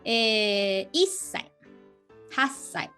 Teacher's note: So that's double consonant. So you have a little bit break, like, little tsu sound.